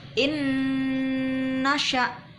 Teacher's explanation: Jangan lupa mendengungnya. Kita hitungi 4 ketukan. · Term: idgham bi gunnah